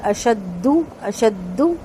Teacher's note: اس کا پیش مکمل ہونٹ گول کر کے ادا کیا جائے گا اور لمبا نہیں ہوگا